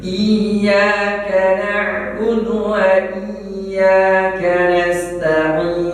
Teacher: Ini sering salah. I-nya agak dilengketkan karena ada huruf iya yang bertasydid